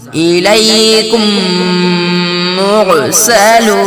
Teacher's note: میم ساکن کے بعد میم آئے تو میم کو میم سے ملا کر گنہ کے ساتھ اخفاء گنہ کے ساتھ پڑھا جائے گا۔ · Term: ادغام شفوی